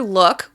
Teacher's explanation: If we say the word "look," we can hear that it ends in the "k" sound. The final sound is voiceless, which means I can't feel my voice box vibrating